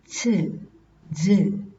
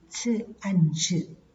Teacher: the oral closure is removed slowly and an audible friction is heard. Ch, j. So these articulators are separated very slowly.